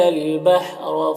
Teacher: را کے اوپر زبر ہے، را کو پر پڑھیں گے